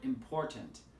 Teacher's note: for example the word important here the stress is on the second syllable